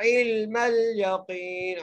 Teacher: इल्मल यकीन, या के ऊपर जबर है, काफ को या से मिलाते हुए हम एक अलिफ की मिक़दार खींच के पढ़ेंगे